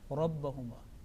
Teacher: Yes, it will be pronounced with thick because it carries a fatha or a dhamma, it is thick.